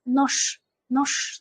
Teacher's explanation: J harfimiz bizda sh ga almashar ekan. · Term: juftibor undoshlar